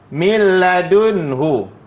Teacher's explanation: Dia tak ada bunyi nun tu, maknanya dia bila ghunnah.